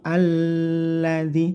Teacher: lamnya di sini ditekan tidak boleh dengung